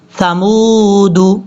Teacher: میم کو واو سے کنیکٹ کرتے ہوئے یہ واو مدہ ہے، اس کو لمبا کریں گے 1 الف کی مقدار یعنی 2 سیکنڈز کے قریب.